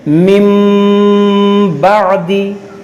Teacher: یہاں پر دیکھیے نون ساکن کے بعد با ہے تو یہاں پر اقلاب کا قاعدہ لگے گا. یہاں پر ہم نون ساکن کو میم سے بدل کر اخفا کریں گے یعنی غنہ کریں گے